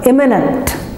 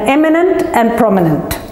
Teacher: So imminent, eminent, and prominent. So the accent is on the first letter or the first syllable